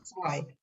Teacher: And then Z as in zwei sounds like TS. It's not Z, it's zwei.